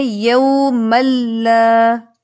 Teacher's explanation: اس کے بعد لام آیا ہے. لام جو ہے حروف یرملون میں سے ہے اور یرملون میں بھی ان حروف میں سے ہے جہاں پر ادغام بغیر غنہ ہوتا ہے